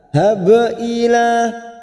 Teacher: Dal sukun kita tahan. Idhab ila, ba sukun qalqalah sugroh kita pantulkan